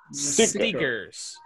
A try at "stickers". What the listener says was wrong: Así como se escucha, pero no le agregue una E antes de la S. Solo es